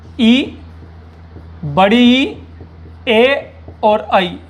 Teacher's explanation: जिह्वा के अग्रभाग से ई, बड़ी ई, ए और आई ये बोले जाते हैं चारों स्वर।